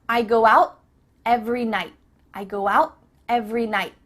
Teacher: your tongue is at the top of your mouth you're about to make the tea sound but no air goes through so it's just stopped at the top of your mouth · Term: cut off the T